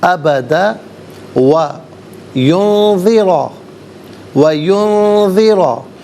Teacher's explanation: ابدا و ینذرا، و ینذرا، ینذرا میں نون ساکن، اس کے بعد ذال حرف اخفا ہے تو نون ساکن کو یہاں پر اخفا کے ساتھ پڑھیں گے۔ اخفا کہتے ہیں ناک میں آواز لے جا کر گنگنانا، اور را پر زبر ہے، را کو پر کر کے پڑھا جائے گا۔